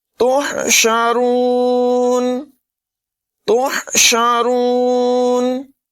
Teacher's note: ہا کی آواز نمایاں کریں گے، را کو پر پڑھیں گے